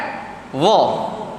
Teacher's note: Huruf za tadi dia boleh sebut tanpa kita mengambil nafas. Tahan nafas pun boleh sebut, dia tak ada angin. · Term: Jahar